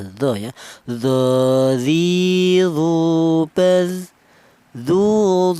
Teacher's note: Huruf d ini keluarnya huruf berasal dari ujung lidah menyentuh ujung gigi seri atas.